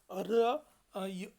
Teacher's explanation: र या स्वराचा उच्चार करताना जिभेचा शेंडा कंप पावतो म्हणून याला कंपित स्वर असे म्हटल्या जाते